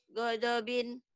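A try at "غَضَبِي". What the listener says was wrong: Nggak ada binnya. Godobi.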